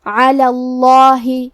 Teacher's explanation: کلمت علا میں کیونکہ لام پہ زبر ہے لہذا لفظ الجلالہ مطلب کلمت اللہ کے لام کا حکم ہے تفخیم، ہم حرف اللام کو موٹی آواز میں پڑھیں گے